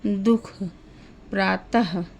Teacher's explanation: विसर्ग कंठ वर्ण भी है। अर्थात इसका उच्चारण जो है वो कंठ से होता है। जब हम बोलते हैं तो आवाज हमारी कंठ से आती है।